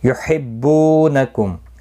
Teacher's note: بو واو مدہ ہے، 1 الف کی مقدار کے برابر کھینچ کر پڑھیں گے